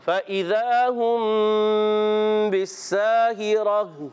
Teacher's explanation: ذال کو زا سے زا سیٹی والے سے نہیں بدلنا